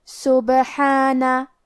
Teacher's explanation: کلمت سبحانہ میں با پہ جزم ہے، لہذا ہم با کو قلقلہ سے پڑھیں گے، اور قلقلہ کا معنی ہے حرف ساکن کو ہلانا، تو ہم با کو ہلاتے ہوئے یہ کلمہ کو پڑھیں گے · حرف الحا پہ کھڑا زبر ہے تو یہاں مد الف ہے، تو ہم اپنی آواز دو مد کے برابر لمبی کریں گے